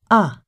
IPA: ʌ